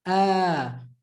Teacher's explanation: you see how we extended the ah to become ah kind of doubled it